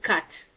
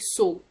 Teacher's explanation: with cut your mouth widens and does not go around when you say it but when you say the word so your mouth automatically becomes rounded